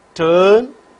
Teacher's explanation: center of the tongue is raised to a position just below half close position the lips are unrounded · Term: central ovals